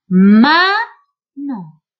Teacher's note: Por ejemplo, en cuanto a la entonación, si yo quiero recalcar que el niño conozca la sílaba inicial, que la pueda reconocer, yo voy a marcar el acento, voy a decir más fuerte la sílaba inicial que la final